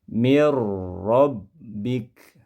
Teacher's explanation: bila gunnah tanpa disertai gunnah, berarti jangan sampai suaranya dipanjangkan, ditahan lama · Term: idgham bila gunnah